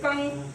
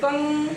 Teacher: जब बिंदु आप बोलोगे बेटा अनुस्वर में बोलोगे तो आपका होता है अनुस्वर में प्रयोग, जैसे कंग, मुंह खुले नहीं तो मुंह से बिल्कुल कम जोर और नाक से कंग, नाक में ज्यादा जोर पड़ रहा है तो नाक में अधिक जोर लगता है और मुंह में कम।